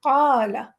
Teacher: ہمیں قا ڈبل پڑھنا ہے، لا چھوٹا پڑھنا ہے